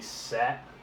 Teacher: The A in sat is a lot shorter than it would be in a different word.